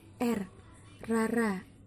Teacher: tempat artikulasinya berada di alveolar, belakang gigi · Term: fonem R